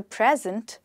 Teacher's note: no time like the present, with the stress on the first syllable.